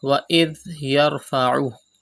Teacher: Pronounce dhal without whistle sound